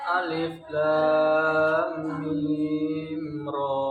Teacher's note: Dibaca panjang 6 harokat. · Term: mad lazim harfi mutsaqal